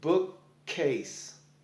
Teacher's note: It's a stop. It is a stop at the first K, and then you continue on with the second K.